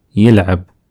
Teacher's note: So we change the first vowel from a to e.